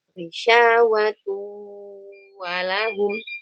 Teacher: Masuk ke waw, nunnya hilang. Apakah dihilangkan semuanya? Enggak, masih kita sisakan gunnahnya. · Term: idgham bigunnah